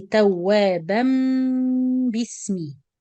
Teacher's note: So you pronounce mim with ghunna, then you join it with the word bismillah.